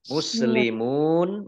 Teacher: Tetapi karena bertemu dengan huruf terakhir yang dibaca sukun, maka menjadi mat aridh lis sukun. Ya, dibaca panjang, boleh 2, boleh 4, boleh 6 harokat.